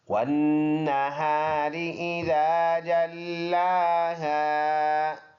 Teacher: والنہار ہم ایسے پڑھیں گے، واو اور نون کو ملا کے پڑھیں گے، واو ہونٹوں کو گول کرنے سے، اور نون کے اوپر شد آیا ہے تو یہاں پر پکا غنہ ہوگا، ناک میں آواز لے کے جائیں گے، اس کو غنہ کہتے ہیں، اور ایک الف کے اندازے سے یہ ناک میں لے جانا ہے، ہا سینے سے ادا ہونے والا، اور یہ الف مدہ ہے، اور را باریک حمزہ، اس کے بعد ذال نرم ادا ہونے والا حرف، یہ الف مدہ۔